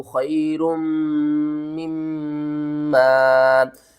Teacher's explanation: दो मीम इकट्ठी आ रही हैं, दो गुन्ने इकट्ठे होंगे, दो मीम को हम चार मीम पढ़ेंगे